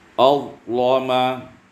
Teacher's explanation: al-lama taghlidul lam, ditebalkan huruf lam itu